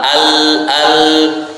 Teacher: ujung lidah bertemu dengan langit-langit atas. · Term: Huruf lam